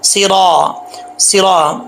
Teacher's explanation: صاد حروف مستعلیہ میں سے ہے، اس سے پہلے اس کے نیچے زیر ہو یا پیش ہو، اوپر زبر ہو، کچھ بھی ہو، یہ موٹا پڑا جائے گا۔ صرا، را کے آگے الف ہے، موٹا پڑا جائے گا۔